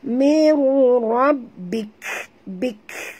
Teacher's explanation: Dan bila kita berhenti di situ, sahabat, keluarkan bunyi hamas pada huruf kaf